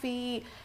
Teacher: یا ساکن سے پہلے زیر حرف مدہ تھوڑا کھینچ کر پڑھیں گے